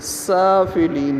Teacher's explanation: سین کے اوپر کھڑی زبر ہے، اس کو لمبا کریں گے ایک الف کے برابر